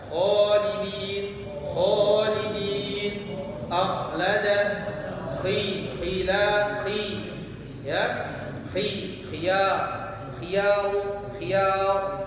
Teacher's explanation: Kha dibaca tebal, terangkatnya pangkal lidah. Khalidin, khalidin, akhlada, khila, ya, khiyar, khiyar, tebal dia, tak boleh ha, ya, tipis.